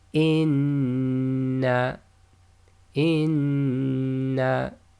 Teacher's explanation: we'll vibrate this in the nose and hold it for a length of 2 because it's Meem Mushaddad. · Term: nasalization